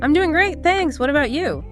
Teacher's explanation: said confidently. Maybe a slight rise fall, showing interest.